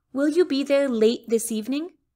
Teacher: you don't hear that strong t at the end i keep it in it's unreleased